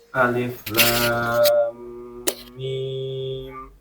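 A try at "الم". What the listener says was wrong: Yang pertama, lamnya masih agak kurang panjang ya. Agak kurang panjang. Kemudian dari lam ke mim, nah itu ditekannya agak kurang lama ya.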